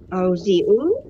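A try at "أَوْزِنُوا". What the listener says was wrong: Auzinu. Auzinu. Nun Ibu, bukan ain. Auzin, bukan auzia.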